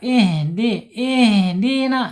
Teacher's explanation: Jangan pakai H tapi pakai H besar di bawah tenggorokan.